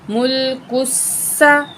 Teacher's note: सीन में सीटी वाली आवाज़ होगी